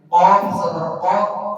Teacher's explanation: صفت استعلاء کل بھی میں نے بتایا تھا، یعنی موٹا کر کے پڑھنا، حرف کو موٹا کر کے پڑھنا، یہ صفت استعلاء قوف کے اندر پائی جاتی ہے۔ قوف کو ہم ہر حال میں موٹا کر کے پڑھیں گے